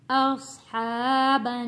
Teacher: ہا کے اوپر کھڑا زبر ہے، ایک الف کے برابر کھینچ کر پڑھیں گے